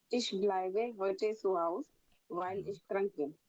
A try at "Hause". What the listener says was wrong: Haus नहीं, Hause. Pronounce with me, Hause.